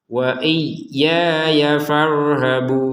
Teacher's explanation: Panjang wa iyya ya. Ya yang kedua langsung gabung sama fa ya, jangan diputus.